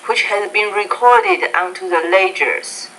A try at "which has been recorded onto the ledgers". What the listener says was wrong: Ledgers, good.